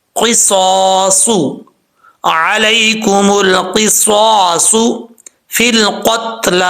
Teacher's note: یہاں پر بھی کچھ الفاظ ایسے ہیں جو مشکل ہیں. صاد ہے، یہاں پر تینوں حرف جو ہے وہ حروف مستعلیہ میں سے ہیں، قاف صاد پھر صاد. ان کو پر پڑھنا ہے، باریک نہیں پڑھنا، موٹا پڑھنا ہے